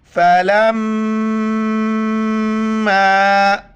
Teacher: فا زبر فا، لام میم زبر لم، میم الف زبر ما۔ دیکھیے میم پر جہاں بھی شد آئے تین دانت والا وہاں پر میم غنہ کریں گے، ناک میں آواز چھپائیں گے۔